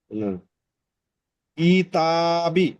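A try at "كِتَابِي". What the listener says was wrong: টানছেন তো এটা টান হচ্ছে না, একবার এটা টানছেন তো এটা টান হচ্ছে না। অ্যাডজাস্টমেন্ট করতে হবে।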